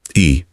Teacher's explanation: और ई बोलते समय जीभ आगे और ऊपर चली जाती है।